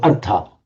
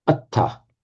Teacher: And yet in Pali, it becomes atta by a standard phonetic mutation from r plus a consonant to doubling that consonant in Pali